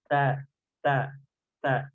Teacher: baru kita benturkan ujung lidah kita kepada pangkal gigi seri atas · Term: huruf ta